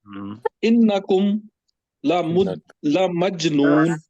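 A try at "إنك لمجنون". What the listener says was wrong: काफ वाहिद का है जी, ये सीधा इन्नका लमजनून।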